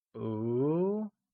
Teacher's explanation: is pronounced using a mid rising tone